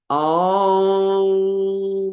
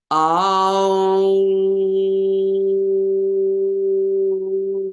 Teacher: The sound Om is created in the inner chambers of the sinuses and the upper palate, like a conch. It's made with the air coming through the nose. The NG sound is emphasized. The lips are firm while chanting Om.